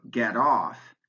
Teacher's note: in the phrasal verb get off, in get it off my chest, it's the second word that gets the stress